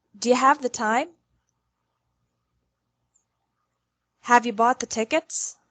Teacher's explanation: the word you often sounds like ya in fast spoken English do you have the time have you bought the tickets will